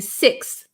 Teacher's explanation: then there's a kind of a breathy TH, like in sixth.